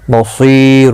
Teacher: صیہ مدہ ہے، ایک الف کی مقدار کے برابر کھینچ کر پڑھیں گے